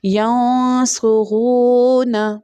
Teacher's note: اور صاد جو ہے، صاد ویسل ساؤنڈ بھی ہے صاد کے پاس، اور صاد جو ہے مستعلیہ لیٹر یعنی بولڈ لیٹر بھی، اس لیے اس کو تھکر ٹون میں پرناؤنس کریں گے